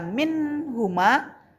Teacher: Karena di situ ada nun sukun bertemu dengan huruf ha, maka dibaca jelas. Nah, itu sebabnya dikatakan izhar halqi.